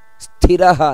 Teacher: ಸ್ಥಿರಹ ನೋಡಿ ಸ್ಥಿ ಅನ್ನೋದು ಮಹಾಪ್ರಾಣ